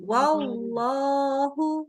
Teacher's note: Jangan wallah, jangan lo. Tapi tebalkan lamnya. Angkat pangkal lidahnya.